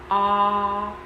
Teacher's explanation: we reach down to the short vowel ah sound, which is open